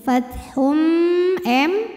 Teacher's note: idgham bunah karena ada tanwin damah yang menghadapi huruf mim maka bunyi tanwinnya dimasukkan ke mim Fath m dan bunyi m-nya ini tahan sampai ada suara masuk · bunyi m-nya ini tahan sampai ada suara masuk hidung